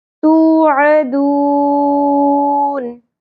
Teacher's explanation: عین کو وسط حلق سے